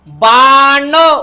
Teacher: जिभेचा शेंडा पाठीमागच्या बाजूला मुडपतो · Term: मुरधन्य